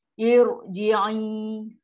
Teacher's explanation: Tebalkan huruf ra. Ra adalah ra tafkim selepas hamzah wasal. Ra mesti tafkim. Ra mesti ra tebal.